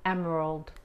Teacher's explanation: la E se pronuncia como la A, pero muy, muy suave.